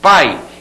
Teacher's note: O som de I, representado pela letra I, o som de I, eu vou dizer que é uma semivogal, é um som mais fraquinho. Então, ó, na palavra pai, eu tenho a junção da vogal A e da semivogal I. Sai tudo junto, né? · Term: ditongo